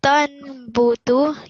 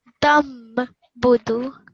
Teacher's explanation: So the noon sakin, it's being replaced by the small meme.